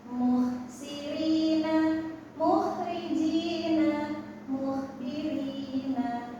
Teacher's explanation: untuk k itu pangkal lidahnya naik.